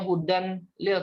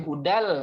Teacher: Fathatain bertemu dengan lam, maka bukan bacanya hudan lil tapi hudal masuk ke lam ya, namanya idgham bila guna.